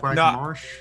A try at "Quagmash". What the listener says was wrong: No, I think you just pronounce like Quagmash. Quagmash. There's no R. There's no R. Quagmash. Quagmash. Mosh. Mosh. Definitely Mosh.